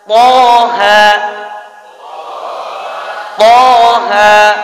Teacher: Berarti dua panjangnya 2 harakat.